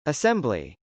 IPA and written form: əsˈɛmbli (assembly)